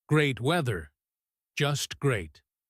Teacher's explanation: Sometimes we say a word that is positive, but we say it with a falling intonation or a flat tone to mean the opposite. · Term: sarcasm